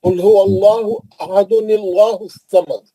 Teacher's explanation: اگر آپ ملا کے پڑھیں گے، نون خطنی نکال کے زیر دے کے پڑھیں گے